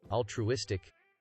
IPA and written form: ˌæltruˈɪstɪk (altruistic)